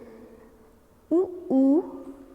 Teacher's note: इसके बाद आता है ओष्ठ। ऊ का उच्चारण हम होठों से, ओष्ठ मतलब होठों से करते हैं, तो इन्हें ओष्ठ्य स्वर कहा जाता है।